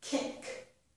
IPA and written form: kɪk (Kick)